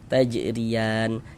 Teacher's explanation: Jadi kalau huruf ro memiliki tanda baca yang letaknya di bawah seperti ini ya, baris di bawah ini, maka huruf ro ini kita baca tarkik, kita baca tipis